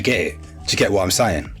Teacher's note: you don't really hear the T at the end of a word